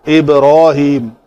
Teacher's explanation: با کے اوپر کلکلا کر کے را کو ہم نے پر پڑھا